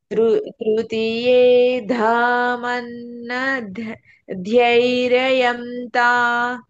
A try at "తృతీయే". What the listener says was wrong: తృతీయే అంటున్నారు. తీకు దీర్ఘం ఉంది కదా. తృతీయే.